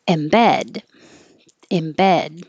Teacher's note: this is the verb stress is on the second syllable